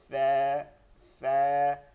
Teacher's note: নিচের ঠোঁটের পেট সামনের উপরের দুই দাঁতের আগার সঙ্গে লাগাইয়া